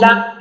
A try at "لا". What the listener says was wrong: ہاں دیکھیں لا اب میں جھٹکا آ رہا ہے آپ کے. لا